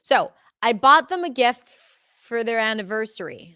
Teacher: anniversary is the last content word, and it happens to be the word that is most stressed